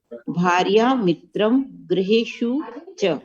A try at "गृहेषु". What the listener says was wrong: हाँ, कोई इसका उच्चारण ऐसे कर देते हैं, ग्रह कर देते हैं। ग्रह बोलना नहीं है, क्या बोलना है? ग्रो या तो ग्री, जो बोलना है।